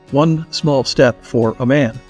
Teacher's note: the single letter word a would often be slurred or slipped into the word following it creating a contraction or compound word